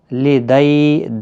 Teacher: دئی یا لین ہے، تھوڑا نرمی کے ساتھ آدھے الف کی مقدار کے برابر کھینچیں گے، نرمی کے ساتھ۔